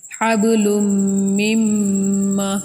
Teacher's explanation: نون ادھر حذف ہو جائے گا، میم کو میم سے ملا کر پڑھیں گے، ٹھیک ہے، ادھر میم کا میم میں ادغام ہوگا۔